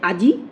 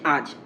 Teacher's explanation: দেখো এখানে বলা হচ্ছে আজি থেকে আজ, কি হচ্ছে এখানে, আ জ ই, আজি, সেখান থেকে কি হচ্ছে আজ, আ জ উচ্চারণ হচ্ছে, উচ্চারণের ক্ষেত্রে এটা আমাদের দেখে নিতে হবে। আজি থেকে আজ হলো, তাহলে ই স্বরধ্বনি এখানে লোপ পেল। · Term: অন্তঃস্বরলোপ